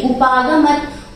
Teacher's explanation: गमत और त में हलन था तो उसको हम पूरा नहीं बोलेंगे